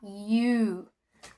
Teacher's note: Uma coisa que você sempre vai ter que fazer para pronunciar esse o é arredondar seu lábio. Você vai fazer, é como se você tivesse falando iu.